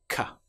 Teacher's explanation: With the sound C, the shape is exactly the same, but we don't engage our vocal cords.